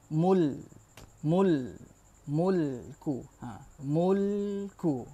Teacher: lam ini dia punya makhraj dia di tepi hujung lidah, bagian sini, bagian tepi sini ya. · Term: melencong